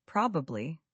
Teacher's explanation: Learners often say probab, but native speakers usually say probably or probably. We drop the middle syllable almost completely.